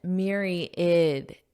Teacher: Now, notice that pronunciation, myriad. So you don't really hear this A in the word. It just sounds like id at the end.